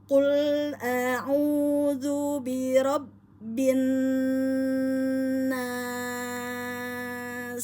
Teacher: ditahan dulu dua harakat kemudian dipanjangkan NAS 2 4 6 harakat